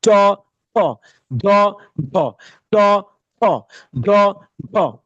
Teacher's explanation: চ অল্প প্রাণ ধ্বনিময় বর্ণ, ছ মহাপ্রাণ ধ্বনিময় বর্ণ, ঝ অল্প প্রাণ ধ্বনিময় বর্ণ, ঝ মহাপ্রাণ ধ্বনিময় বর্ণ।